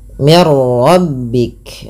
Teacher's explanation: ini ada nun sukun bertemu dengan ro, yaitu cara membaca yang masukkan bunyi nunnya. Tadi tidak dibaca lagi min rabbik, tapi dibaca dengan mir rabbik, dengan memasukkan bunyi nun kepada huruf ro, dan kita kenal dengan istilah idgham bila gunnah.